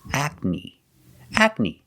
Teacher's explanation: Ac. And the second syllable is knee, the long E like green beans.